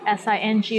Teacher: and the syllable is in the first tone